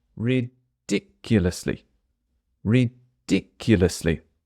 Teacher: Ridiculously, I'm going to add a bit of stress to this word, and the stress is on the second syllable